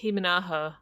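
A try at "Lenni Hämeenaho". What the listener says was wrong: Aminaho. I think it's Aminaho. I think it's Aminaho. I think the H is silent.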